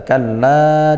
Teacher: Kalla inna kitaba. Kalla di sini ada mad jaiz munfasil. Kita baca panjang 2 alif.